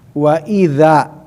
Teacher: Makhraj za itu di ujung lidah pan gigi seri, tapi lidahnya agak digigit sedikit ya, jangan sampai nggak ada yang digigit ya gitu. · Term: huruf yang digigit